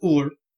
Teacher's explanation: The R is quick at the end, and there's a heavy accent on the U. But where we get it in Smite and some of the voice lines and packs you hear just go Ull is from the anglicized version that would have come over into Britain and Brittany.